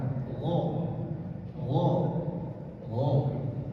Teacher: Makhrajnya dekat dengan mulut. Tempat keluar huruf gho itu di atas, atau kita sebutnya ujung tenggorokan.